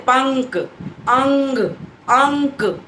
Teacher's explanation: आप अनुस्वार जब बोलेंगे तो उसमें हवा पूरी नाक से निकलती है